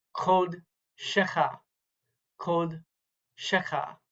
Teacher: That's a Kametz Hatuf. It looks like a regular Kametz there, but it's an O vowel, not an A vowel.